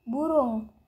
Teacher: vokal u tinggi bawah belakang bundar